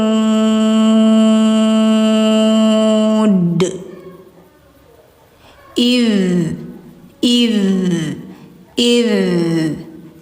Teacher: Letakkan lidah ujung ke ujung gigi. Idz iz tapi tidak ditekan. Jadi suaranya tetap mengalir. Jadi jangan iz, jangan ada s-nya, tapi id hum alaiha qu lho gina gi mengalir suara.